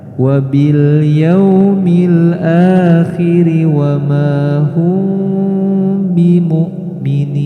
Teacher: secara perlahan bibir kita mulai menutup karena kita akan membaca huruf ba, dan huruf ba itu adalah huruf syafawi. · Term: ikhfa syafawi